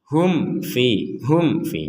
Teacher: mim sukun bertemu Fa maka kita membacanya dengan jelas Hum Fi Hum Fi jelas berarti tidak ada samar tidak ada